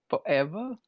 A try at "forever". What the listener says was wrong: you need to pronounce your R's, bro.